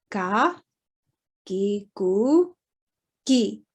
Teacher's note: It's not as voiced as ga. It's sort of a halfway between a ka and a ga in central dialect.